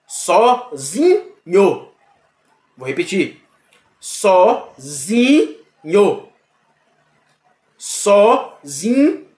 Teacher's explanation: O só, por ela ser sonoramente intermediária, nem fraca e nem forte, ela é classificada como subtônica. É a sílaba subtônica. · Veja que nho cai. E o só fica intermediário. E o zi sobe. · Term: sílaba tônica